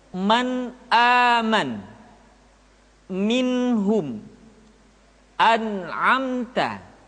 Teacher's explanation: Nun mati atau tanwin dibaca dengan idhar ketika bertemu dengan huruf a, ha, a, kha, dan ga. Caranya, nun mati atau tanwin dibaca secara jelas.